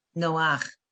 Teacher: The chet with under it. You say no, and then you go to the vowel first, and then the chet. No ach. Okay, and I never got that far.